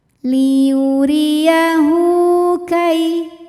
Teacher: Kai ada harfulin sebab ada ya sukun didahului baris fathah. Maka kita bunyikan dengan lembut.